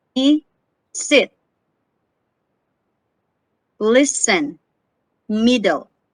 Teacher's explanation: the sound E is a high front lax vowel